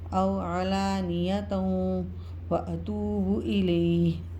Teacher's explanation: کے بعد واو مشدد آ رہا ہے، یرملون میں سے ادغام مال غنہ ہوگا، یعنی دو زبر جو ہے وہ واو مشدد میں مدغم ہو جائیں گے